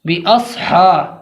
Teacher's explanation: صاد زبان کا سرا اور سامنے والے دانتوں کے سرے سے مل کر ادا ہوتا ہے، زبان کا سرا اوپر نیچے کے دانتوں کے سرے سے مل کر صاد ادا کیا جاتا ہے، باس کے بعد ہا جو کہ بیچ حلق سے ادا ہوتا ہے، لہذا صاد کے بعد جو ہا کی آواز آئے گی وہ بیچ حلق سے آئے گی